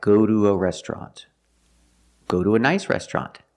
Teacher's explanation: sometimes it's pronounced do when it's after a vowel and before the schwa sound.